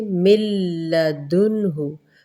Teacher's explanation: نون نہیں پڑھا جائے گا، سائلنٹ ہو جائے گا۔ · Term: ادغام